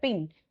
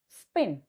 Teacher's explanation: So I can say here pin is aspirated and here P is nonaspirated. So those two variation which is aspirated and non-aspirated they are called alophones and they are called variation and it is happen because of contrastive distribution.